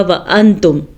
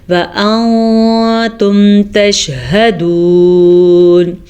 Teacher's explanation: نون ساکن کو چھپا کے پڑھیں گے، غننے کے ساتھ پڑھیں گے۔ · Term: اخفا کا قاعدہ